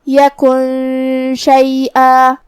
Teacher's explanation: شین بھی حروف الاخفاء میں سے ہے تو ہمیں نون کو چھپاتے ہوئے اور غنہ کے ساتھ یہ حکم کو ادا کرنا ہے